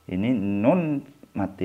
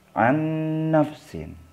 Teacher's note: Ini nun mati atau nun sukun dibaca anna, masuk ke nun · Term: idgham bi gunnah